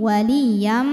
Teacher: ada tanwin fathah yang menghadapi huruf mim maka tanwinnya masuk ke mim waliyam jadi bunyinya m dan dengungkan tahan Wali nah ini masuknya